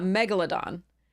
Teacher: British English and American English the correct pronunciation is uh Megalodon so the emphasis is on the first syllable um so because it is megalos and O Odon I think